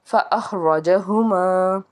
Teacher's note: را کو بھی پر پڑھیں گے کیونکہ اس کے اوپر زبر ہے